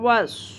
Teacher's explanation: واو صاد زبر وس، صاد is exactly like سین، لیکن اس کو ہم پر کر کے پڑھتے ہیں، موٹا کر کے ہیوی بناتے ہیں